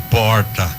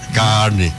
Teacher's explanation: Que é um R que a gente chama retroflexo, aquele R que a gente fala e quase se engasga